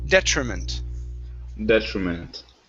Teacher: So the stress is at the very beginning.